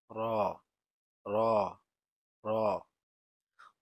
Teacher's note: র, র, র উচ্চারিত হয় জিহ্বার আগার পিঠ তার বরাবর উপরে তালুর সঙ্গে লাগিয়ে র উচ্চারিত হয়।